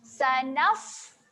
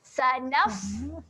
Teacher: kita kemaskan saja makhraj huruf fa, iaitu hujung gigi atas berjumpa dengan bibir bawah. Sanaf. Okay, dan kalau kita rasa kat sini, ambil tangan letak dekat depan mulut, dia akan keluar angin sedikit.